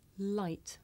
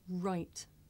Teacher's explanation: i make the sound with the front part of my tongue behind my teeth and i make the r sound by making my lips come out and pulling my tongue back